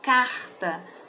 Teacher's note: a sílaba tônica o car ela é uma palavra paroxítona